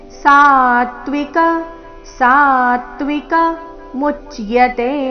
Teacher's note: ಮೂ ಮೇಲೆ ಆಘಾತ, ಕೊನೆಯತೆ ದೀರ್ಘ